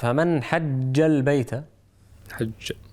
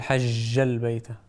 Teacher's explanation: راعي شدة الجيم، ولا تأتي بها بالرخاوة